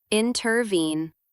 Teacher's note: It consists of two unstressed syllables followed by one stressed syllable. For example, in the word intervene, stress is on the third syllable. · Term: anapest